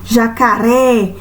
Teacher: o acento agudo ele tem esse som aberto ou seja jacaré toda vez que o som está bem aberto